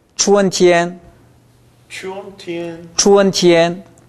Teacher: 春보다는 天이 약간 낮습니다